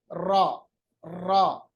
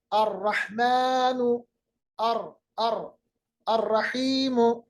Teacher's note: تقریر مطلب it is repetition due to thrilling of the ٹنگ ٹپ، یعنی جو ہمارا جو زبان کی جو نوک ہے اس کی جو تھرلنگ ہوتی ہے، ڈرفٹنگ ہوتی ہے، اس کی وجہ سے یہ ایسا لگتا ہے کہ اس حرف کو ہم ریپیٹ کر رہے ہیں، جیسے الرحمن، ار الرحیم۔